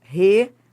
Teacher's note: E qual é a sílaba que manda na palavra? É o por, é a sílaba tônica.